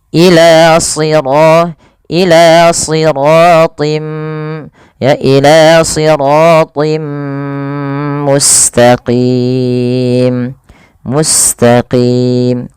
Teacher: tanwin bertemu mim. Nah, sama cara bacanya seperti mayyasha, masukkan bunyi tinnya kepada mim, kemudian suara nya ditahan ya. Ila siratim ya, ila siratim mustaqim, mustaqim, qim mad tabi'i.